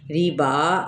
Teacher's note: اب زال کی زیر اور ہا کی زیر کو لمبا نہیں کھینچیں گے، میم کی پیش کو را کے ساتھ ملائیں گے، را باریک پڑھا جائے گا زیر کی وجہ سے۔ ریبا، اب با پہ کھڑا زبر ہے، ایک الف کے برابر کھینچیں گے